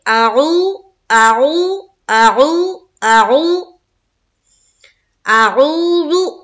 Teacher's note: مجھے جب ہم پڑھے تو سننے والے کو سمجھ میں آ جائے کہ پہلے ہم حمزہ نکال رہے ہیں اور دوسری بار جو نکال رہے ہیں عین کو واو سے ملاتے ہوئے نکال رہے ہیں، تو حمزہ کی آواز الگ کلیئر سمجھ میں آنی چاہیے اور جو عین ہے اس کی آواز صاف طور پر الگ سمجھ میں آنی چاہیے